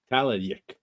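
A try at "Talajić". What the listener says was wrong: the C is never pronounced like a K in Slavic languages. It's pronounced ts, but because it has the accent, it becomes ch.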